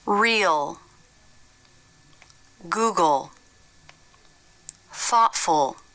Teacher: to make this sound you don't lift your tongue tip instead it's down touching the back of the bottom front teeth the back part of the tongue pulls back towards the throat you can see there isn't much jaw drop and the lips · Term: dark L